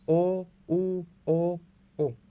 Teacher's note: वृत्यान्मुखी में क्या होता है, स्वर के उच्चारण में होठों की जो आकृति होती है वो गोल हो जाती है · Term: वृत मुखी